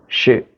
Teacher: shin itu adalah huruf yang hamas, bunyi anginnya